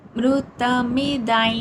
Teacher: ధర్మ్యా మా plus యా మ్యా ధర్మ్యా మృతమిదై దా తర్వాత అనుస్వర ఉచ్చారణ అక్కడ యా కింద పలుకుతాం. హా యా మృతమిదై కొంచెం ముక్కుతో పలికినట్టు పలకాలన్నమాట